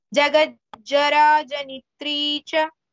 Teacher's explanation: It's not ni, no elongation for ni.